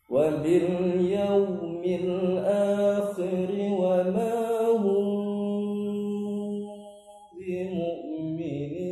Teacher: Karena kita lihat ada huruf mim sukun maka kita kasih rapat, padahal kita tidak lihat ada huruf ba setelahnya. Nah, kalau ada huruf ba setelahnya maka suara mim sukun itu harus disamar-samarkan atau jangan terlalu dikasih rapat bibir. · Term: ikhfa